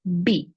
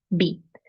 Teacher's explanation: So remember, this letter is always pronounced with your 2 lips. It's bilabial